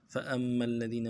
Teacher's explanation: فَأَمَّا کے حمزہ کو آگے میم کے ساتھ ملانا ہے، میم کے اوپر تشدید ہے، زور دیں گے